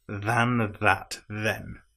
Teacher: all three of the th's are voiced